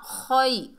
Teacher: खै, ये या लीन है, या साकिन से पहले ज़बर है, या लीन है, नरमी और जल्दी से अदा होगा